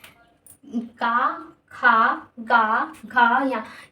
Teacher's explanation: कंठ मतलब हमारे कंठ से इन वर्णों को बोला जाता है। क ख ग घ य। यहां कंठ से आवाज आ रही।